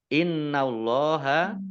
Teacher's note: Innallaha nun tasdid dibaca gunnah atau mendengung ditahan 2 harokat. Allahnya dibaca tebal karena harokat di depannya fathah.